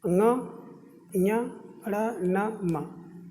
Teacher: ङ, ञ, ण, न, म, ये वर्ण जो होते हैं सब क्या हैं? नासिका से उच्चारित होते हैं। इस कारण से इन्हें हम लोग नासिक के वर्ण कहते हैं।